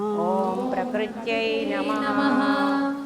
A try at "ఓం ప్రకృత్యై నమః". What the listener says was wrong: చాలామంది తల్లులారా మీలో యై నమః కలిపేస్తున్నారు. వసుప్రద యై నమః, శివ యై నమః కాదు, వసుప్రద యై నమః, శివ యై నమః.